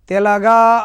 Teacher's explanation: తెలగా అన్నప్పుడు లఘువు లఘువు గురువు గ కు దీర్ఘం ఉంది కాబట్టి గురువు